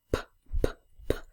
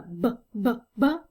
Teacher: And they're kind of like counterparts of each other. So I can call p, p, p a voiceless bilabial stop. However, the b, b, b is a voiced bilabial stop.